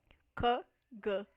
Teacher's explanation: Então, para quem entende um pouquinho de fonética, né, tanto K como G são consoantes velares, né? São produzidas no véu palatino, né, no mesmo lugar da boca, lá no final. K, G. E a diferença é que K é desvozeado, não tem vibração das cordas vocais, e G é vozeado, tem a vibração das cordas vocais.